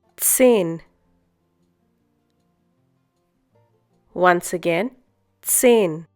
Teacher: Hope you remember the pronunciation of Z in German. It's TS.